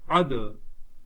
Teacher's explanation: عین دال زبر اد، یہ حرف قلقلہ ہے، ساکن ہے تو اس میں قلقلہ خود ظاہر کر کے پڑھیں